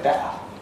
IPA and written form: ˈbeʔə (better)